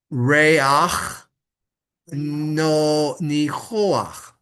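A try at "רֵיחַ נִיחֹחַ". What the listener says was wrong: That word right there, Ray, you don't pronounce the U, right? It's not Recha, it's Ray.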